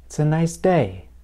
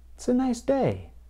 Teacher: The sentence has an adjective, nice, and a noun, day. Notice that I put more stress on the noun, day. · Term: word stress